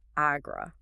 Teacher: The mechanics of saying agra are so aggressive. You pair the back of the throat plosive with a rolling, almost grinding vibration. It really is.